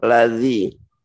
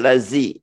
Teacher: Bertemu dengan ujung gigi atas. Tidak ada angin yang keluar karena bukan hamas termasuk jahar ya. Ladzi bukan lazi ya.